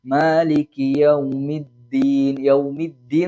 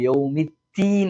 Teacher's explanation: ദാൽ കൂടുതൽ കട്ടി കുറച്ചു കഴിഞ്ഞാൽ ത ആയി മാറും നമ്മൾ നേരത്തെ പറഞ്ഞ ത എന്നുള്ള അക്ഷരത്തിലേക്ക് മാറും ദാൽ എന്ന് ഉച്ചരിക്കുമ്പോൾ നാവിന്റെ